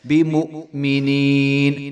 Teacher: جب حمزہ ساکن ہوگی تو اس کے اوپر جھٹکا آئے گا